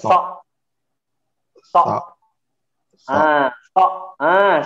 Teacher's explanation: Menebal suaranya. Mulutnya tidak maju.